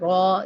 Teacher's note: इसको पुर रखते हैं, रा नहीं पढ़ते, अरबी में रा नहीं बोलते, रॉ बोलते हैं